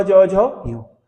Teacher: इनमें तालु से जीभ टकराती है, तो ये तालव्य हो गए